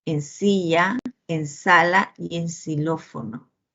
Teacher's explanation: Luego tienen la fricativa, esta sibilante, ¿no? La fricativa alveolar sorda, representado por la S y por la letra X